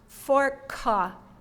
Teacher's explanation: For fork, the vowel at the end added a syllable that probably threw many of you off.